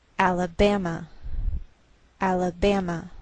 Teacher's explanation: secondary stress is shown by a lowered Mark so the greater stress is on this third syllable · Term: primary stress